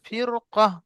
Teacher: পুর করে পড়তে হবে, যদিও র এর পূর্বে কাসরা আসে